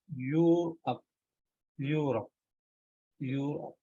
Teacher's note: Though the spelling it is starting with E, but in pronunciation it is Europe, Europe, Europe, and it is actually starting with the sound Y. It is a consonant.